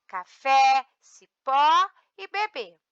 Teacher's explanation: oxítonas, a última sílaba é tônica.